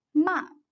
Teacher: after me ma ma the fourth tone is a lowering tongue the pitch goes rapidly from high to low